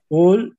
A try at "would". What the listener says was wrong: No, would, no, would. Sin la L. Would.